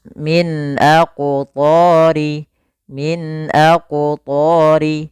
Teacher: suara nunnya harus jelas Tidak ada embel-embel tahanan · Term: izhar halqi